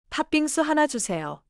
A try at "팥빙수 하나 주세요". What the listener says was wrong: Keep 빙수 connected. 팥빙수, not 파? 빙수 with a long pause.